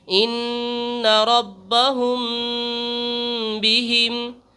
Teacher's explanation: قاعدہ نمبر 2، اخفاء شفوی۔ میم ساکن کے بعد با آئے تو غنہ کے ساتھ اخفا ہوگا